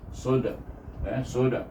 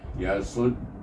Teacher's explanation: Ada qalqalah bila saya berhenti. Kalau kita sambung tak ada qalqalah sebab dal itu hidup baris depan.